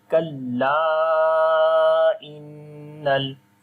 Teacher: On the noon there is shad sign, we make gunna. · So this mad is madde munfasil right now, so we make also madde munfasil, which we long 3 to 4 seconds